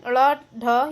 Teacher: इनके उच्चारण में जीभ पीछे की ओर मुड़कर झटके से साथ सामने गिरती है। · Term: उच्चित व्यंजन